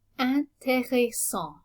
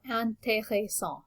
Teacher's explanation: So there's a nasal vowel at the end of this word, en, and the T is not pronounced.